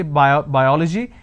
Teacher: i'm stressing on the first syllable